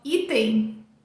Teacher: Terminamos com o schwa, porque a sílaba tônica é essa do começo aqui. E a gente vai fechar os lábios para fazer esse no final.